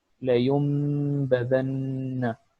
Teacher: یہاں پہ نون کو ہم میم میں چینج کر رہے ہیں اور اس کے ساتھ ہم لوگ اس کو غنہ دیتے ہیں 1 سیکنڈ کے لیے تقریباً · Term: اقلاب